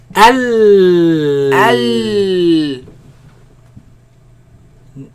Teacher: The sound escapes on the sides. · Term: lam